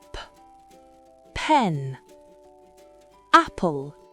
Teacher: C'est beaucoup plus fort qu'en français. En anglais, ce son est fortement aspiré au début d'un mot ou d'une syllabe accentuée.